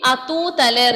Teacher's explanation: Here we are not pronouncing H sound. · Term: H will be silent